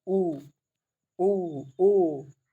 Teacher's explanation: वृत्त मुखी क्या होते हैं कि जिनके उच्चारण में ओठ गोलाकार या वृत्त मुखी होते हैं। जैसे आप जैसे ही बोलेंगे आपको अगर बोलना है प्रैक्टिकल करना है तो आप एक शीशा लीजिएगा और बोलिएगा उ ऊ औके जो ऊंट है ना वह गोलाकार हो जाएंगे।